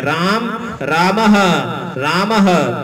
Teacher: विसर्ग और ह कंठ से बोले जाते हैं · तो विसर्ग एक ह जैसा उच्चारण स्थान है।